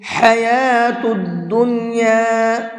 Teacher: حا کو حلق سے نکال کر کے پڑھیں گے